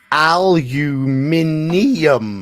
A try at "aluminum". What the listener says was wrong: Where are you getting that extra I from? Not aluminum, aluminum. Aluminum. Aluminum.